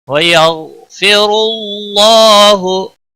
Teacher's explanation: غائن حروف مستعلیہ میں سے ہے، موٹا پڑا جائے گا، غائن کو ہلانا نہیں۔